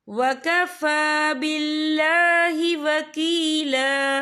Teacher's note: फा के ऊपर खड़ी हरकत है, तो हम इसे 2 या 3 हरकत के बराबर खींच के पढ़ेंगे।